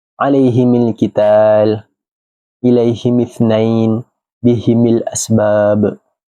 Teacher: Abu Amru membaca huruf mim dengan kasrah ketika wasal